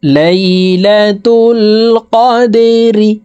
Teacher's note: দাল কলকলার হরফ নিচের দিকে ধাবিত করে ধাক্কা দিয়ে উচ্চারণ করব।